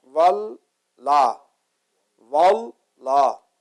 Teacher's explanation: تو جو اللہ کی لام ہے وہ 2 مرتبہ ہم اس کو پروناؤنس کریں گے، اور تھوڑا سا 2 حرکت کے برابر لمبا کریں گے۔